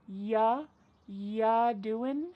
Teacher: Ya doing, we're dropping that G again.